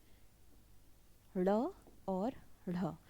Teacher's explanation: जीभ उल्टी होकर तालू को स्पर्श करती है और झटके से हट जाती है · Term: उच्च व्यंजन